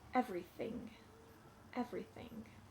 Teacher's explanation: TH sound does not have vibrations in my throat.